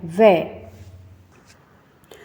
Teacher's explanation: ये दंत और ओष्ठ के दोनों के प्रयोग से ही इसकी ध्वनि निकलती है। तो वै का जब हम उच्चारण करते हैं तो इसमें हमारे होठ भी काम आते हैं और दंत से भी स्पर्श होता है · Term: दंतोष्ठ